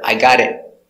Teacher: But the final T is a stop T, so you don't hear T. I got it. You hear, I got it.